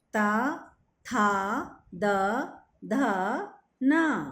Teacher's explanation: ता था द ध न तो दंतीय कहे गए हैं क्योंकि इनके उच्चारण के समय जीभ दांतों से लगती है। एक बार इन्हें भी बोल कर देखिए आप।